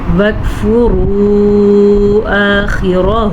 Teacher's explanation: وجہ النہار وکفروا، یہ باریک کاف ہے، کوشش کیجئے گا کہ آپ یہاں پہ کلکلا نہ کر دیں، جیسے کہ بعض لوگ پڑھ لیتے ہیں وک، نو، وکفروا آخرہ، ٹھیک ہے۔ مد کو کھینچ کے پڑھنا ہے، خوا کے مخرج کا خیال رکھنا ہے اور را کو پر پڑھنا ہے